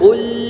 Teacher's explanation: qaf dengan dhammah pangkal lidah, qul, lam jangan sukun dalam keadaan waqaf, huwa, ha dengan mengeluarkan dari tenggorokan yang paling jauh, huwallah, lafzul jalalah dengan tebal tafkhim, hu ahad, alif, ha dan dal, ahad.